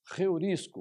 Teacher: o som aspirado na primeira vogal do ditongo